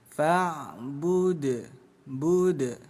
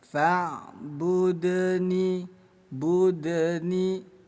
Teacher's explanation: Ada dal sukun di tengah bacaan, disebutnya qalqalah sugro. Bunyi dal kita pantulkan kecil ya.